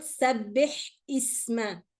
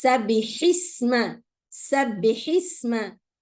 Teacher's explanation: No, it's sabbihisma, sabbihisma. The hamza is dropped.